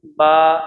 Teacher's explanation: मीम सख्त हिस्से से और बा जो है जहाँ पे होठ हमारा होठ है, होठ का नरम हिस्सा जो भीगा हुआ हिस्सा होता है वहाँ से बा